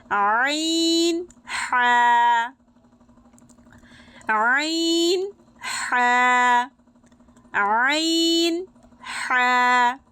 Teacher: হালক বা কণ্ঠনালীর মধ্যভাগ থেকে উচ্চারিত হবে